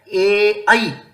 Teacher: ए और ऐ का उच्चारण स्थान कंठ तालु है।